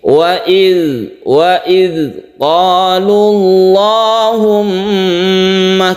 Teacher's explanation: kita tahan karena dia bertasydid. Mim bertasydid itu disebut gunnah musyaddadah, sehingga kita dengungkan.